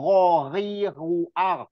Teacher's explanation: kasar suaranya seperti ada pasir-pasir gitu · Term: Gin